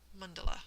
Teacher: the accent is actually on the first syllable, and all of the A's have the schwa sound to them, which is that indistinct sort of a vowel sound that so many vowels share.